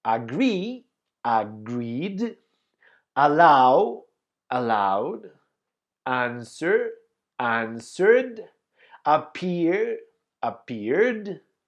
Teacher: These are verbs that finish in voiced sounds, and that is why we pronounce the final ed as D.